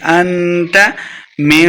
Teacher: فِيمَ أَنْتَ مِنْ ذِكْرَاهَا، انت اخفاء کا قاعدہ ہے، گنہ کریں گے۔ انت من، اخفاء کا قاعدہ یعنی گنہ کر کے پڑھیں گے، من نہیں پڑھیں گے